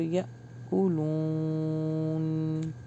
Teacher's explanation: یا جھٹکا آئے گا کیونکہ الف کے اوپر جزم ہے. یا کولون سٹاپ کریں گے تو یا کولون.